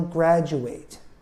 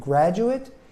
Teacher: we take the last syllable and we make it an IT sound